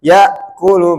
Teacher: Tadi kita matikan ya kulu. Nah, ketika hamzah itu kalau mati, maka dia berhentinya langsung pakem. Ya, nggak bisa didorong lagi.